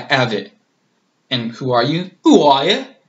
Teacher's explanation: drop the H don't ever use it basically in the accent